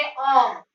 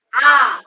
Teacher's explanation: दूसरा है दीर्घ स्वर, जिसके उच्चारण में 2 मात्रा का समय लगता है, अर्थात अधिक समय लगता है, उसे हम दीर्घ स्वर कहते हैं। जैसे आ, जैसे हम ह्रस्व स्वर का उच्चारण करेंगे अ, कम समय लगा, और वहीं पर अगर हम बोलते हैं आ तो 2 मात्रा का समय लग रहा है